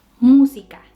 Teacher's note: la palabra música. El acento está en la primer sílaba. Entonces diremos música, no música, tampoco música, es música.